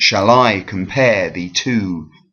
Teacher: That is a rising meter, okay? So it starts unstressed and then goes stressed